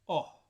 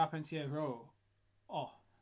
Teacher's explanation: So it stays open, and it stays pure. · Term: open O